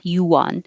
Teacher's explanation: my lips go forward for ooh and back for the ah